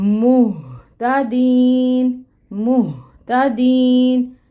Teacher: آپ نے یہ جو ہا ہے نا، اس کو سینے سے نکالنا ہے